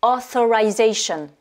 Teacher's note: Donc là, on a TH et donc on va bien mettre la langue sur les dents supérieures.